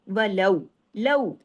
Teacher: لو واو لین ہے، باریکی سے پڑھنا ہے، لین کے حرف کی آواز کو لین کی طرح نکالنا ہے، اردو کی طرح نہیں